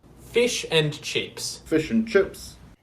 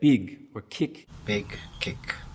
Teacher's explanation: where the vowel sound instead of being towards the front and pretty high something like an e it's going to move back towards the center back towards the schwa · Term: kit centering